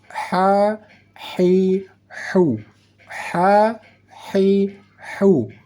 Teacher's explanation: cara membaca huruf H yang di tengah kerongkongan ada bunyi desis angin yang halus. · Saat kita membaca huruf H, seolah-olah ada desis angin halus yang kita masukkan atau kita keluarkan dari kerongkongan atau ke dalam kerongkongan. Seolah-olah saat kita membaca huruf H ada suara angin halus.